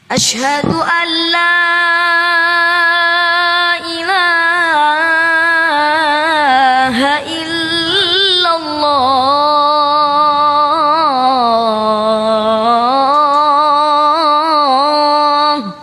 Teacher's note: nun sukun bertemu dengan lam itu hukumnya idgham Bila ghunah ya jadi harus langsung masuk ke lam tapi tanpa mendenggung · Jadi harus langsung masuk ke lam tapi tanpa mendengung, karena di situ artinya adalah memasukkan tanpa mendengung ya. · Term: idgham bila gunnah